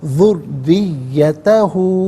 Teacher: افتتخذونہ و ذریتہ، ذریتہ، را کے نیچے زیر ہے، را کو باریک کر کے پڑھیں گے، مشدد ہے، جماع کے ساتھ پڑھیں گے